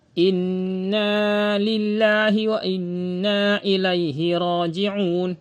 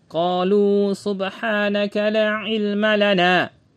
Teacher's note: mewajibkan untuk menipiskan pengucapan huruf lam pada lafaz lillah dan huruf lam yang terdapat pada kata lana